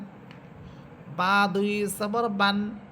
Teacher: বা এই হরফটি দুই ঠোটের শুকনা অংশ থেকে উচ্চারিত হবে। বা এটা হচ্ছে তার মাখরাজ।